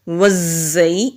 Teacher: جب ہم زا کو ادا کرتے ہیں زبان کی ٹپ نیچے والے جو سامنے کے دو دانت ہیں ان کے مسوڑوں پر مضبوطی سے لگائیں گے تو ہلکی سی بزنگ ساؤنڈ آتی ہے